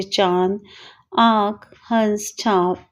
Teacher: अनुनासिक में चंद्र बिंदु लगता है, इसका उच्चारण नाक और गले दोनों से होता है